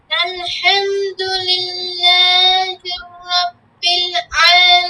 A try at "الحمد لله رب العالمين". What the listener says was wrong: এখানে দেখো, এই যে লিল্লাহি, লিল্লাহির হয়ে যায় তোমার, লিল্লাহির রব্বিল আলামিন, এভাবে না, হবে না তো। লিল্লাহি, হি শেষ, রব্বিল আলামিন, দুইটা দুই শব্দ, হ্যাঁ।